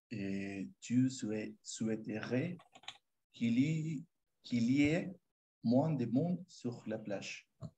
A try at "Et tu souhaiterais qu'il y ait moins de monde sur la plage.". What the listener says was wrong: Exact. Très bien. Qu'il y ait. Exact. Parfait. Qu'il y ait. On a dit la même prononciation.